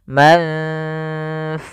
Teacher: kita samarkan atau kita ya kita dengungkan ke huruf fa-nya. Bukan, maka jangan dibaca mangfus semua, tapi langsung ke makhraj daripada huruf fa-nya. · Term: ikhfa